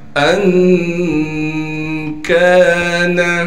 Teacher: حمزہ کو نون سے ملائیں گے اس لیے کہ نون ساکن ہے اور نون میں اخفا یعنی غنہ کریں گے۔